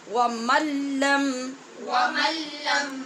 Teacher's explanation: یہاں نون ساکن کے بعد لام ہے اور لام اور را دونوں میں بے غنہ ادغام ہوتا ہے ، اس لیے ہم نے ایسے پڑھا جیسے میم کو لام